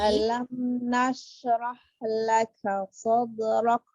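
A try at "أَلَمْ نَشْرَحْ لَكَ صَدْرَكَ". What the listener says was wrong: Sadrak, beri hamas kafnya.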